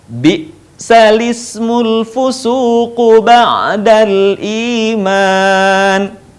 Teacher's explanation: hamzah yang berharokat kasrah menjadi hilang dan harokatnya kemudian dipindahkan ke huruf lam sebelumnya. Seharusnya dibaca bi'sal ismu, tetapi di naql dibaca menjadi bi'salismu.